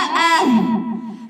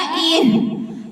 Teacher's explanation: हमजा में तो झटका पाया जाता है · ह हमजा हलक के आखरी हिस्से से अदा होता है